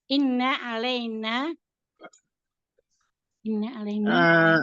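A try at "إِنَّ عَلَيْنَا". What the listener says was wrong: Bunda, itu ada guna musadada ditahannya agak lama. Inna alaina.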